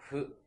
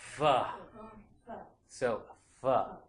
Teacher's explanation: So it's very similar, I think, to American English, the F in American English, but you're not touching the lower lip to the upper teeth quite as strongly as you would making the F in English. So in American English, when we make this F sound, it's like F.